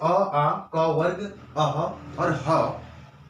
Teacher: जब आप कंठी ध्वनि बोलेंगे, जैसे अ, आ, क वर्ग, अह और ह, इन ध्वनि को बोलते समय गले में पूरा बल पड़ेगा।